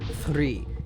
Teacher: sometimes when I say the word three I'll roll it